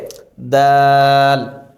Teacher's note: জিহ্বার আগা সামনের উপরের দুই দাঁতের গোড়ার সঙ্গে লাগিয়ে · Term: দালের মাখরাজটি